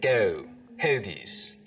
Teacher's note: the goat diphthong starts to move forwards in the mouth so we get go hoagies you want to go get some